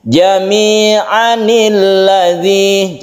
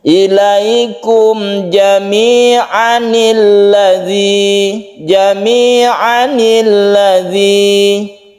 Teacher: jadi a-nya ini tidak panjang lagi karena sudah diganti menjadi nun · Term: nun sogir